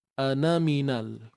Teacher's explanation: kalau sambung bacaan Nun ni jadi satu harakat